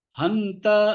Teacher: ஹந்த அந்த இல்ல ஹந்த தண்டையிலேருந்து வரணும்